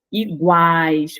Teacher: perceba que semivogal é mais fraca vogal mais forte semivogal mais fraca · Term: tritongo